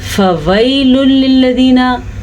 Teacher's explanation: या साकिन से पहले ज़बर है तो यहाँ पे या लीन हो रही है, ठीक है। यहाँ पे हम नरमी से पढ़ेंगे और खींच के नहीं पढ़ेंगे।